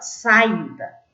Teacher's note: O i é mais forte, é uma paroxítona.